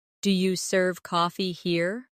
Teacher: In casual speech, do you becomes dia.